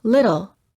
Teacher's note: It also sounds the same as the rolling R sound that sounds like R of many languages, where the tip of the tongue touches the upper gum ridge. This sound is also sometimes called a tapped T because you quickly tap the tip of the tongue on the gum ridge.